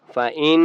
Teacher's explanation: فإن نون کے اوپر تشدید ہے غنہ کریں گے